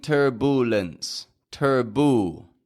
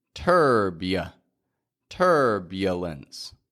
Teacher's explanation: right turbulence again notice I'm not saying turbulence turbu turbulence but I've got a y Glide in there once again turb turbulence there's no why in the spelling just